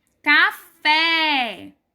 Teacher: a sílaba mais forte de café é a última. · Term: sílaba tônica